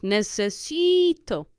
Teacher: You have a vowel at the end, so you push down on the syllable before last, on the penultimate syllable, which makes it necesi.